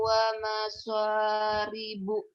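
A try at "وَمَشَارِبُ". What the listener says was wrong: wa masya, bukan wa maso, wa masya.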